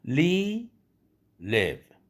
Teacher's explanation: v라는 받침이 있는 바람에 v 발음을 하기 위해서 이 장모음을 미리 서둘러서 끝내는 겁니다.